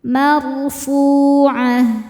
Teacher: Fu mad tabi'i zahiri karena ada waw sukun sebelumnya dhammah. Cara bacanya panjang 2 harokat. Marfu'ah. Tak marbutoh jadi ha sukun.